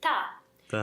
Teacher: We were stressing at regular intervals. So because the word está is not stressed, it gets reduced down